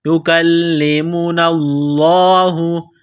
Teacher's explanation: لفظ اللہ کے نام سے پہلے زبر ہے، لفظ اللہ کے نام کو موٹا کرنا ہے · کاف کو باریک کرنا ہے، لام کے ساتھ پلس کرنا ہے، لام کے اوپر تشدید ہے، لام کو دبانا ہے، سختی کرنی ہے